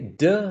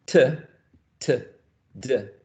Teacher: That both are alveolar sounds, right? D, t. Both are plosives, right?